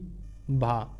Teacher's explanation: ओष्ठ महाप्राण घोष व्यंजन वर्ण